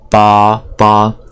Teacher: So the tone is also first tone, is monotone.